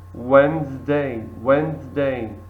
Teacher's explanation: we don't pronounce the first letter D in Wednesday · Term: silent letters